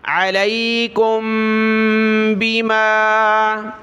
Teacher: کاف کو میم کے ساتھ ملایا، میم کے بعد یہ با ہے تو یہاں ناک میں آواز پیدا کریں گے